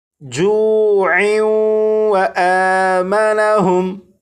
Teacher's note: تنوین اور تنوین کے بعد واو حروف یرملون میں سے ہونے کی وجہ سے یہاں پر ادغام ہوگا